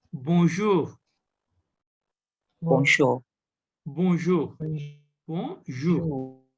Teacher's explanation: this N is a nasal sound here it is not pronounced